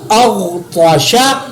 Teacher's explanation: गैन और ता को मोटा मैंने अदा किया